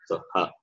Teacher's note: Its place of pronunciation also throat. Okay, from the throat only the sound comes. That is why it is a guttural.